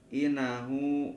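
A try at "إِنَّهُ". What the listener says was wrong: Eh, kagak in. Pikir tasdirna. Nya pamiin pasti ka canak guna pala teu aya tasdid.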